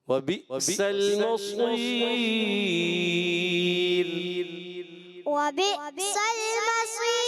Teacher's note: را کو باریک بھی رکھنا ہے